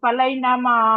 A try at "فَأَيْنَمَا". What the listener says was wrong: ফালাই না, লাম না ওটা, ফাআই। লাম হতো যদি এই পাশে মিলানো থাকতো, হ্যাঁ, লাম হতো, মিলানো নেই তাই আলিফ, ফাআই।